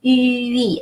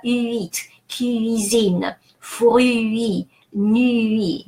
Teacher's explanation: stay on U longer to prepare for E